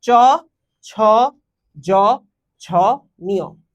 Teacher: এগুলো যখন উচ্চারণ করি আমাদের তালু থেকে বাতাস বের হচ্ছে, এই কারণে এগুলোকে আমরা বলে থাকি তালব্য ধ্বনি।